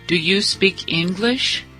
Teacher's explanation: Entonação subindo no final